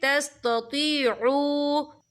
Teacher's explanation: यहाँ पे वाव मदा हो रहा है, वाव साकिन है, वाव साकिन से पहले पेश है और इस पर छोटी सी मद भी है, तो हम यहाँ 3 या 4 हरकत के बराबर खींच के पढ़ेंगे।